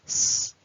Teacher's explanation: I'm just making a hiss of air and there is no vibration in the throat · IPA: /s/